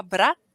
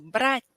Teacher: quando eu falava brat, eu encostava com pontinha de língua nos dentes de cima. Quando eu falo brat, aí encosto com pontinha de língua nos dentes de baixo. Então, esse é brat, esse brat.